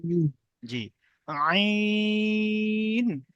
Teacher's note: আইন গলার ভিতর থেকে শব্দটা হবে উচ্চারণটা হবে একদম গলার ভিতর থেকে আইন এটাও তিন আলিফ টান দেখ টান হচ্ছে তিন আলিফ এবারে